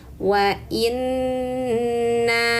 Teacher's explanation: jadi ada bunyi dari rongga hidung yang didengungkan itu n-nya ya · nun bertasydid maka tahan dan dengungkan 3 harokat, namanya gunnah musyaddadah. Gunnah itu artinya dengung teman-teman ya. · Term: ghunah musyaddadah